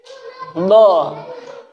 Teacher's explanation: Do itu kan sisi lidah kiri ya, ketemu gigi geraham atas. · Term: huruf do